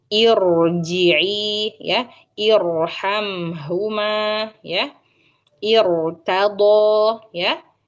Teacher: Huruf ro, apabila ro sukun ini ya, sebelumnya terdapat kasroh aridoh ya, maka huruf ro-nya dibaca tebal ya.